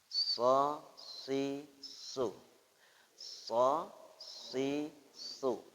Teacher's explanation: Ihdinas gitu, atau samping ihdinas sirot. Nah, jadi ujung lidah ya di ujung gigi atas bawah, tapi bibir ke depan, mulut terbuka, tengah lidah merapat ke atas, desisan seperti desisan siulan